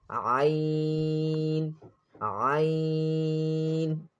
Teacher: Ain is pronounced from the middle of the throat, same like ha, ha, and Ain, Ain.